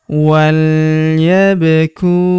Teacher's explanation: Huruf ba berharokat sukun kita pantulkan atau kita qalqalahkan.